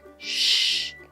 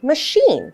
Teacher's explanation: the CH is very different because instead of a k sound, it is a sh sound, just like when you're at the library.